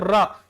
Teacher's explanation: आप र बोलेंगे तो जीभ में कंपनता आएगी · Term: लुंठित वर्ण